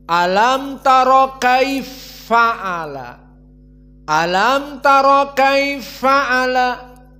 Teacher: Maka di awal dari surat Al-Fil ada idgham al-kabir dari qiraah As-Susi an Abi Amr, dua idgham. Pertama fa bertemu dengan fa, kaifa fa'ala menjadi kaifa'a, kaifa'ala.